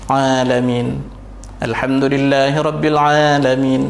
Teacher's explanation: Cuma kena pastikan makhraj ain tu di halqum. Tak, bukan dah masuk ke rongga hidung.